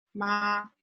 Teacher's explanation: First tone is high and flat, like ma, when the dentist asks you to open your mouth.